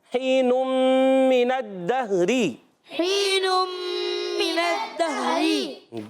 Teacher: من الدہری میں میم کے نیچے زیر، نون پر زبر ہے، حرکت کو نہیں کھینچیں گے، نون کی زبر کو ڈائریکٹ دال سے ملائیں گے